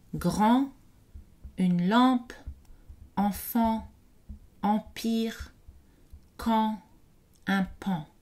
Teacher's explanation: La voyelle en est une voyelle postérieure, arrondie, ouverte et nasale. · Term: voyelle nasale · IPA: [ɑ̃]